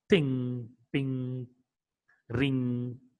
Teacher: This ing sound, ing, voiced velar nasal consonant sound.